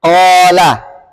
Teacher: huruf alif yang dibaca tebal setelah huruf-huruf tafkhim